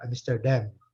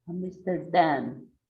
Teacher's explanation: A letra M ao final da palavra, ela exige que a gente feche a boca.